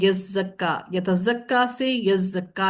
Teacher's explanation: تا کو زا کے اندر ادغام کیا گیا، جس کی وجہ سے دو زا ہو گئے ، اور زا کو ادغام کرنے کی وجہ سے دو زا